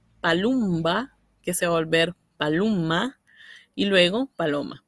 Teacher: esta M geminada proviene muchas veces de una asimilación, como es el caso de palumba, que se va a volver palumma, y luego paloma.